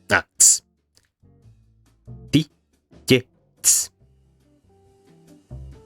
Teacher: You begin with T, and you begin to merge these into each other. You end up with a palatalized T, and then this turns into ch.